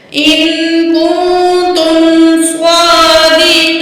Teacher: تو یہاں جو ہے نون کے اوپر زبر ہے، وقف آ کی علامت آ گئی ہے، تو ہم نے نون کی زبر کو ڈراپ کر کے نون ساکن پڑھنا ہے